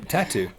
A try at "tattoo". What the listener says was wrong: Tattoo. It's tattoo. It's not tattoo. You got the emphasis. on the wrong syllable.